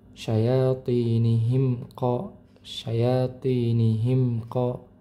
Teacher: Bisa dibaca jelas, bisa dibaca samar, dan bisa dibaca dileburkan atau dimasukkan ke huruf berikutnya. Nah, posisinya di sini bertemu dengan huruf qof, maka mimnya dibaca jelas. · Mim sukun bertemu dengan huruf qaf, maka mim sukunnya dibaca jelas ya.